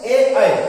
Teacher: जैसे ये कंठ तालु से ए, ऐ, अगर हम ए कह रहे हैं, ऐ कह रहे हैं, इन दोनों का उच्चारण स्थान क्या है, कंठ भी है और तालु है